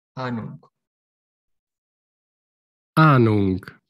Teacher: La H después de la vocal no se pronuncia y hace la vocal larga.